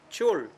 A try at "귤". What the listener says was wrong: 왜 이분은 줄 발음이 나지?